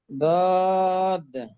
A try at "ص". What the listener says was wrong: বলছি সদ বলে দদ। সদ।